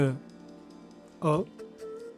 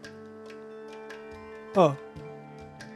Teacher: Your lips did not move. Your tongue did not move. Nothing tightened and then nothing closed.